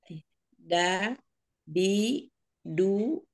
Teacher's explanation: yang ujung lidahnya itu ke Pangkal gigi pangkal gigi Heeh pangkal gigi seri ya ya yang atas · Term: Dal